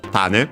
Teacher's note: Actually accent on the first syllable, so Tane. Seed, especially of a plant.